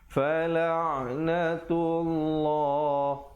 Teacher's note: lafzul jalalah itu datang sebelumnya baris dhammah, baris depan. Jadi baca tebal. Jangan pula di sini kita baca nipis ya.